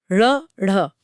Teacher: हां, यह नाम इसलिए दिया गया है क्योंकि इनके उच्चारण के दौरान जीभ की नोक पहले तेजी से ऊपर की तरफ मूर्धा को छूती है हम और फिर एक जोरदार झटके के साथ नीचे की तरफ गिरती है जैसे कुछ बाहर फेंका जा रहा हो। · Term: उत्क्षिप्त व्यंजन, उच्छिप्त व्यंजन